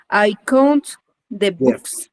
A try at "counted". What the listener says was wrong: Counted. Aquí asegúrese que termine en ED. Counted. Con toda libertad. Counted como español.